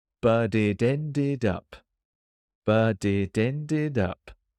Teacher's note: the letter T at the end of but changed to a D